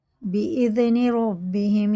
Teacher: زال باریک ہوتا ہے، بیزنی نہیں کریں گے، نہ بیجنی کریں گے